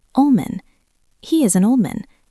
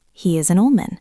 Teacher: Think about the phrase old man. Old ends in D. Man starts with M. The D disappears.